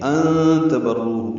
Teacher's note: یہ اخفا ہے نون ساکن کے بعد تا آنے کی وجہ سے